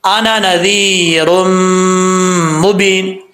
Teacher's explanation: نون کے بعد ذال ہے، بغیر سیٹی کے پڑھیں گے اس کو